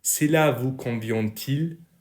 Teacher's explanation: please listen to the liaison between the final T and the initial vowel